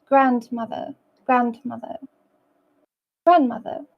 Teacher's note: connects to the m in mother you don't pause between them the D sound slightly changes to blend seamlessly into the M sound the D is almost silent but not completely